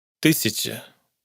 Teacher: ya no solo está reducida, sino que además está entre dos consonantes palatalizadas. Sh y ch.